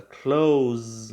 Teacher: houve uma vibração no final da palavra Close